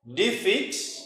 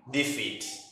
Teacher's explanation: If you say defeat, a verb. Defeat with a rising intonation. Yes, with a rising intonation. It becomes a noun.